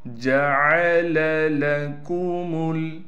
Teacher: جیم کے بعد عین ہے، عین کو صاف کر کے پڑھنا ہے